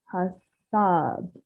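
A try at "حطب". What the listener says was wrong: Don't do a double vowel if it isn't a double vowel. Hatab. It's got the same way. Hatab. This is a ta that I was showing you before. It sounds a little bit like a ta, but it is warmer. Hatab.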